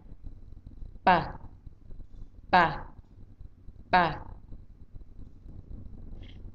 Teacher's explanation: There is no puff of air when we pronounce p. · But when you pronounce p sound, there is the puff of air from your mouth.